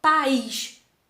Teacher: Olha aqui, o A e o I juntinho. Mas esse A e esse I, a gente pronuncia forte os dois, ó, país. E não tem nenhum que eu pronuncio fraquinho. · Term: hiato